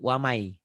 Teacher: Ditulisnya ada N-nya, dibacanya N-nya hilang. Kemana? Melebur ke huruf ini, wamai. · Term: idgham